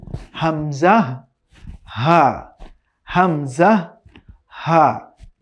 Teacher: কণ্ঠনালীর একদম শুরু থেকে, from the bottom of our থ্রট, এখান থেকে 2টি হরফ উচ্চারণ হয়